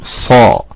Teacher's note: നാവിന്റെ മുരട് ഉയരും അക്ഷരത്തിന്റെ ശബ്ദം മേലെ അണ്ണാക്കിന്റെ ആ പൊത്തിലേക്ക് ഇങ്ങനെ കയറി പോകും · സ്വാദ് പറയുമ്പോൾ നാവിനെ നമ്മൾ ഒന്ന് വണ്ണിക്കും നാവ് വണ്ണിക്കുക എന്ന് പറഞ്ഞാൽ അക്ഷരത്തെ വർണ്ണിക്കും സോറി നാവിന്റെ മുരട് ഉയരും അക്ഷരത്തിന്റെ